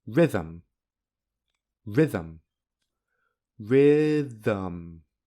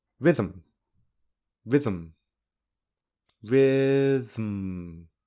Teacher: You cannot hear a vowel. Instead, the pronunciation moves directly from th to n. In this case, n is a syllabic consonant because it is a syllable, yet there is no vowel.